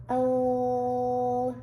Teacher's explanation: it's making an l sound where the tip of your tongue touches the very tip of the roof of your mouth. Like, if you're feeling the roof of your mouth, there are some bumpy parts.